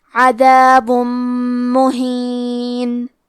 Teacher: کلمت عذابن کے آخری میں با پہ تنوین پیش ہے، پھر حرف المیم آتا ہے کلمت مہین. میم حروف الادغام بغنہ میں سے ہے تو ہم یہ حکم کو غنہ اور تشدید کے ساتھ ادا کریں گے